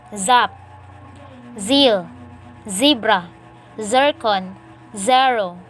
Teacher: Voiced alveolar sibilant. Initial.